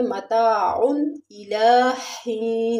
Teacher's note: مستقر ومتاع، ومتاع میں بھی اظہار ہوگا، یعنی یہاں پر تنوین کے بعد حروف ہلکی کی 6 حروفوں میں سے حمزہ آ رہا ہے تو اظہار ہوگا